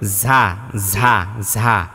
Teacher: ঝা বলতে বাতাস বের হয়ে যায় ঝিঝি পোকার মতো, ঝা ঝা ঝা। কিন্তু জিমের যখন উচ্চারণ করবেন তখন কিন্তু বাতাসটা ভিতরে আটকে থাকে, এরকম যাতে হয়।